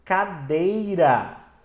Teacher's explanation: Porque a sílaba mais forte dela é o dei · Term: palavra paroxítona